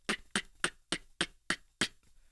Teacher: an inward k without the inhaling where you just create that same sort of seal with your tongue and you pop your tongue down from the back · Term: rim shot